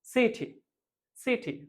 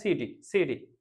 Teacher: ঠকে ড এর মতো উচ্চারণ করে আমেরিকানরা